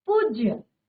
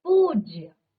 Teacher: दीर्घ स्वर होना चाहिए बल्कि हमने क्या किया ह्रस्व स्वर लगाया है